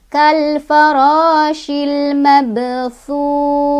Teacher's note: Kal farashil mab ada qalqalah sugro atau qalqalah kecil karena ada ba yang sukunnya sudah dari asalnya ya. Cara bacanya dipantulkan tapi pantulannya kecil karena kita langsung baca ke huruf berikutnya ya